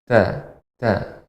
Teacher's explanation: Ta mengenai pangkal gigi seri atas. Jadi bukan ujung, tapi kalau ini gigi bagian pangkal, bagian atasnya terkena juga sedikit gusi ya.